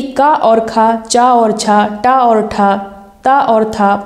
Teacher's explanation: प्रत्येक वर्ग का पहला और दूसरा वर्ण जैसे कि का और खा, चा और छा, टा और ठा, ता और था, पा और फा, ये हमारे अघोष होते हैं।